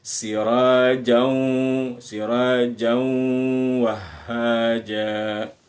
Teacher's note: Jadi bunyinya langsung ke bunyi waw dengan dengung gitu ya. Sepanjang kita tahan sepanjang 2 ketukan. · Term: idgham bi gunnah